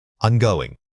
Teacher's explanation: In fast speech, the auxiliary verb am almost always reduces to a quick sound and merges with the following word. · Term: Contraction